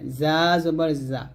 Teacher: আর যা যখন উচ্চারণ করবেন জিহ্বাটা নিচে দাঁতের সাথে লাগবে, জিহ্বার আগাটা নিচে দুই দাঁতের মাঝে লাগবে